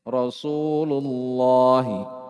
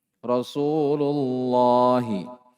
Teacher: Setelahnya ada lafaz Allah. Lafaz Allah yang didahului dhammah. Di dhammah sebelumnya. Maka ditebalkan juga. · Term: tafkhim